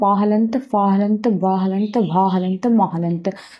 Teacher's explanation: तो प वर्ग का उच्चारण स्थान ओष्ठ होगा।